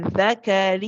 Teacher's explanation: you're kind of pronouncing the noon and you're pronouncing the waw at the same time